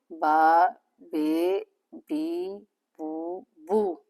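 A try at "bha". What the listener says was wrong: No, the pronunciation is not a ba. Ba, like for example, bazi. So this one it's a combination of B and H. So it will bring a different sound. But this one it's ba ba ba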